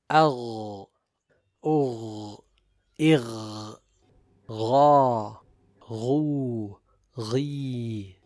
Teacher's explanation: Now the letter ghain has jahr and rakhawa, so the breath is blocked but the sound flows, and since it has isti'la, it is recited with tafkhim.